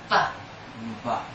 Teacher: With B, B, there's vibration before you blow air.